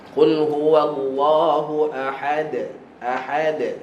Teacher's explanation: Dal makhraj dia hujung lidah belakang gigi atas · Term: Qalqalah